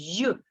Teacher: Якщо ми покладемо долоньку на гортані скажемо й ми відчуємо дрижання голосових зв'язок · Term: приголосний і дзвінки